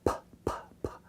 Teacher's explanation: It's a bilabial, put both lips together, and you explode out air when you say them, p, p, p. But there's no vibration to vocal cords.